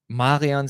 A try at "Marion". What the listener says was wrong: Wait, how did you pronounce her name? Marion. You don't see the N? Marion. It sounds Italian to me. Marion. Marion.